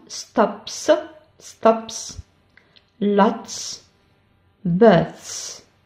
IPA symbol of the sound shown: s